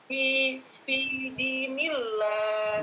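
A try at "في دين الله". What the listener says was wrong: Nah, fi dinillah sahih.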